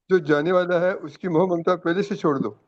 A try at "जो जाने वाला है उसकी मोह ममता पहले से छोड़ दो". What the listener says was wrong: धीरे धीरे थोड़ा थोड़ा शब्दों को एक साथ जल्दी जल्दी उच्चारण नहीं करना है, धीरे धीरे उच्चारण करना है। आवाज तो ऊंची रखना है, लेकिन शब्दों को जल्दी जल्दी नहीं बोलना है।